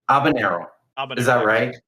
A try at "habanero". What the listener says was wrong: Well, I mean, you use the English R instead of habanero, but like habanero, yeah.